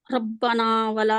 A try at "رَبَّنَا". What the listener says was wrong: آپ کی را موٹی نہیں ہے ربنا ربنا